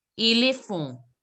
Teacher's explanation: N sound should not be there. It should be éléphant. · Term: nasal sound